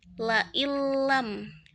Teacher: Contohnya, apabila huruf nun bertemu dengan lam, la illam. Nah, itu tidak disertai dengan dengung, tidak ditahan sebentar gitu. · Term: idgham bila gunnah